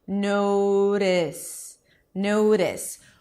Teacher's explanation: What the tongue does is it comes up to touch the upper palate, and instead of blocking the air and releasing, it kind of gives the upper palate a high five.